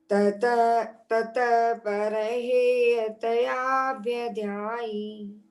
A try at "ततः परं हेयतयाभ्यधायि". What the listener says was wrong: ध्यायी नहीं, धाई अंत में।